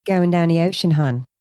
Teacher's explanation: It's a very diphthong O. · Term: Delmarva accent